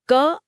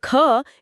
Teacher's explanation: क अल्प प्राण है, इसे बोलते समय बहुत कम हवा मुंह से बाहर आती है। और ख एक महाप्राण है, जिसमें फेफड़ों से हवा का एक भारी झोंका बाहर धकेला जाता है।